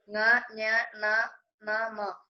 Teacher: എന്നീ അക്ഷരങ്ങൾ ഉച്ചരിക്കാൻ തുടങ്ങി നിശ്വാസവായു മൂക്കിലൂടെ വിട്ടാൽ ങ, ഞ, ണ, ന, മ എന്നീ അക്ഷരങ്ങൾ ഉണ്ടാകും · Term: അനുനാസികം